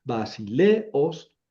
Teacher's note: Aquí no es diptongo porque son dos vocales fuertes.